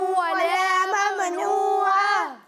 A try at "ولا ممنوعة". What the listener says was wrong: اچھا, اسے ممنوعہ نہیں پڑھیں گے. ٹھیک ہے, میم کی آواز کو ہلانا نہیں ہے.